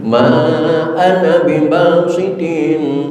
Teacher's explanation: seluruh alif di dalam kalimat ana itu bukanlah alif mad, tetapi alif qasar. Maka tidak boleh dibaca panjang.